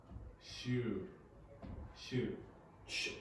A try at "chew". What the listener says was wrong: Shoe. That's shoe. Chew. A little longer.